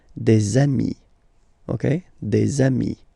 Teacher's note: if you make the liaison, so the link between the two, you will get des amis